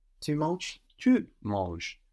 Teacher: This has an S on the end, but of course we don't hear it.